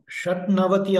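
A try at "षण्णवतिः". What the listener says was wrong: ஷட் நவதி சொல்ல மாட்டோம் ஷண் நவதி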